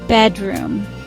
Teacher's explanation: Bedroom. 2 syllables. First syllable is stressed.